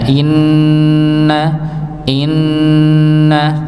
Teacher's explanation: maka setiap huruf nun yang bertasydid ya maka didengungkan, ditahan.